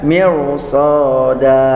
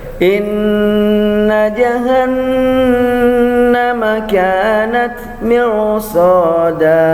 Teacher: Jadi ujung lidahnya menempel di atas langit-langit di atas, ya. Jadi dibaca ini tebal, ya, tafkhim